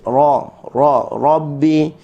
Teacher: Ra, hujung lidah berada di langit. Kita bengkokkan sedikit. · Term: huruf ra